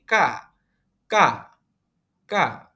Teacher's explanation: g + a tidak dibaca sebagai ga namun dibaca seperti k